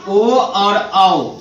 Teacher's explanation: ओ और औ, इन दो वर्णों का उच्चारण किससे होता है? कंठ और ओष्ठ दोनों से होता है। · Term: कंठोष्ठम